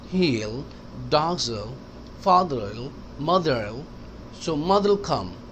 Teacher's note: will कहने का ज़रूरत नहीं है, मिला दें।